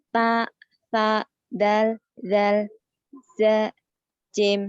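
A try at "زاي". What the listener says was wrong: Zainya jadi zai. Jadi beda. Zai, jim gitu ya. Zai, jim.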